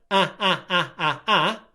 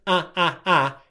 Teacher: My tongue is at the front of my mouth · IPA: /æ/